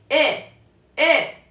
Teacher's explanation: viene desde aquí e e y la otra e eh okay al final en realidad se escucha un poquitito como una u al final eh eh pero muy leve casi